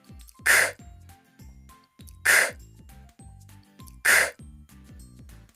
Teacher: your voice is off and your throat should feel calm without vibration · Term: C sound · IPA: /k/